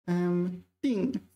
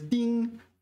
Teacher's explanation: 定, fourth tone is a verb, whereas 定, first tone is a noun.